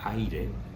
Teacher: 2 vocales, en este caso la A y la I, juntas en una misma sílaba. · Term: diptongo